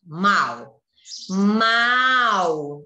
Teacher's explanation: Então, o A sai forte. O U já é só para ajudar na palavra. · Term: semivogal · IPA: /u/